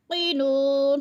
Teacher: क़ाफ मोटे हरूफ में से है, क़ाफ को पुर करके पढ़ेंगे